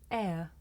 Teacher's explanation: this is a diff thong a double vowel sound the shape the mouth makes changes from the beginning of the sound to the end